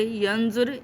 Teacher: پوشیدہ کر دیا نون کو، نون غنہ کی ساؤنڈ نکالی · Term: اخفا